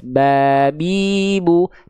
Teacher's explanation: Menyentuhkan bibir atas, bibir bawah kita beres. Babi, bu. Tapi hati-hati, ketika kita melafalkan huruf ba, jangan sampai bibir kita, mulut kita terlampau dilipat.